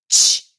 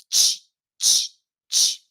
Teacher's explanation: Vai ter aquele nome africado lá, que eu junto um fonema fricativo, que é o som do X, que eu consigo prolongar, sh, com o som do T, que explode.